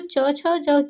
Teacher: च वर्ग के जितने भी होते हैं उसको हम तालु से बोलते हैं, तालु से निकलता है तो उसको हम तालव्य वर्ण कहते हैं